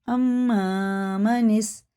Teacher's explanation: میم زبر ما نون سین زین نس الف چھوڑ دیں گے، اما منس، یہ غنہ کر کے پڑھیں گے، جابی میم پہ شد ہے